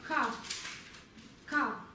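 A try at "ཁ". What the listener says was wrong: А где придыхание? К. К. К. Везде придыхание. К.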